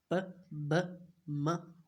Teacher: मिसाल के तौर पे first of all we have bilabial sounds. Bilabial sounds ऐसे होते हैं जो हम होंठों को टच करने से प्रोनाउंस करते हैं